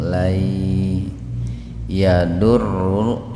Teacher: langsung dimasukkan ke lafaz Allah dengan tafhim, dengan tebal.